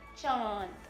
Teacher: जब हम चंद्रबिंदु की मात्रा बोलते हैं तो उसका स्वर हमारे नासिका के द्वारा बाहर आता है